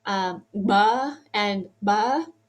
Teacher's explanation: really interesting labial velar plosives